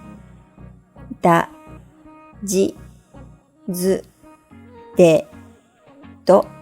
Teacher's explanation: Notice that chi with a dakuten is pronounced just like ji in the row above. Likewise, tsu with a dakuten is pronounced the same as zu.Let's read the row together.